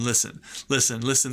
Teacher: the T is silent of course